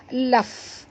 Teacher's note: fa di sini bila dia mati bunyikan hamasnya. Laf, ya, ketap gigi atas ke bibir bawah.